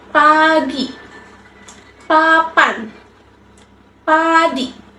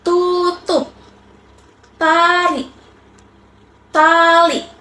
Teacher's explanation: Adalah jenis konsonan dengan kenyaringan terendah. ini karena selain tidak bersuara, suara juga dihasilkan dari letupan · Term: konsonan letup tak bersuara